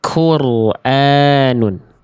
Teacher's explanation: Yang B salah karena qafnya keluar percikan nafas sehingga berubah menjadi huruf kaf.